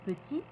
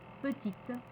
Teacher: de prononciation quand l' se termine par une consonne comme t on ne prononce pas le T au masculin mais on prononcera le T au féminin